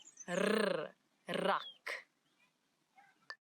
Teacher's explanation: it's the rrr, as if your tongue is jumping up and down in your mouth